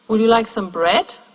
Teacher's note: it has a rise at the end